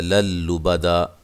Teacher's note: یقول اہلکت مالا لبدا، قوہ مدہ ہے اور ما الف مدہ ہے۔ للبدا، یہاں نون تنوین کا ادغام ہے لیکن بلا غنہ ہے، غنہ نہیں کریں گے۔ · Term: ادغام بلا غنہ